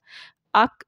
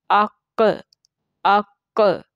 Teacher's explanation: तो ये जो आवाज़ है, यानी कि दोबारा से जो आवाज़ टकरा के आती है, इसको कहते हैं हिला के पढ़ना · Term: कलकला